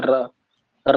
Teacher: लुंठित जिसका उच्चारण तालू से लुढ़क कर स्पर्श करके आता है र र करोगे तो जीव थोड़ा सा लुकता है तो र